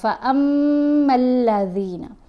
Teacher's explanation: آواز ناک میں پڑھی جائے گی، ایک الف کی مقدار جتنا ٹھہر کر پڑھا جائے گا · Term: غنہ